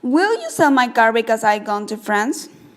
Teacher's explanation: we say my more slowly and because I more quickly. · there is one syllable between cell and car and 3 syllables between car and gone, but the time between cell and car and between car and gone is the same. We maintain a constant beat on the stressed words: cell, car, gone, France.